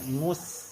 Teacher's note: Mus langsung ditarik sinnya tipis